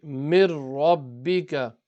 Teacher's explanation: the noon has fallen off only on the lam and the ra if they appear after noon sakin and tanween. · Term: idgham